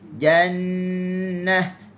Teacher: hujung lidah di langit tu makhraj bagi huruf nun, dan dia juga tidak menempel secara kuat. Okey, bighairin dighat, tanpa ada tekanan.